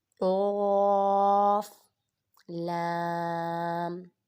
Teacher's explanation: قاف کو بھی پر پڑھیں گے، یہ حروف مستعلیہ میں سے ہے